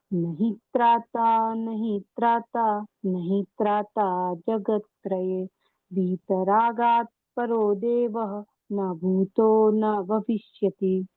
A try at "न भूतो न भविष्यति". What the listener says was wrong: न भूतो न भविष्यति, भू दीर्घ है, उसका उच्चारण दीर्घ करना है, और कुछ बाकी सब ठीक है।